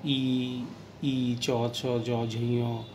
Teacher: এগুলো উচ্চারণ করার সময় তালুতে গিয়ে কিন্তু আমাদের ফুসফুসতাড়িত যে বাতাস, সেটি বাধাপ্রাপ্ত হচ্ছে, তাই এটিকে তালব্য বর্ণ বলা হয়।